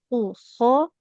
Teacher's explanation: Kalau kha itu dia makhrajnya di ujung tenggorokan kita ya.